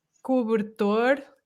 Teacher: estresse mas não é a sílaba forte ainda continua exatamente tonica normalmente são mais abertas ou então pelo menos ouvem-se não são reduzidas